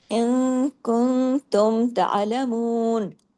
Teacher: ता के बाद जब ऐन पे जाएंगे आवाज गले में चली जाएगी। लेकिन आवाज बारीक रहेगी।